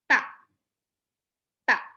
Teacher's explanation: ujung lidah menyepak dua gigi seri atas jadi kayak disepak Lee tak tak jadi ujar lidah ujung lidahnya